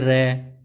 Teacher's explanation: next आता है लोडित या लुंटित, इसके उच्चारण में मुख द्वारा जीभ की नोक से शीघ्र ही बंद होता है और 2-3 बार खुलता है